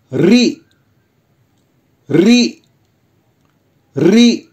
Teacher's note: री बोलते समय जिह्वा ऊपर के भाग से कई बार घर्षण करती है